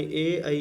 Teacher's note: ए ऐ इनका उच्चारण स्थान कंठ तालु दोनों होता है